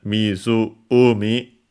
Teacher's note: Weirdly enough, it's accented Mizu-umi on the umi.